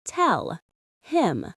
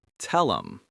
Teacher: native speakers almost always cut off the H sound completely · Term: drop the H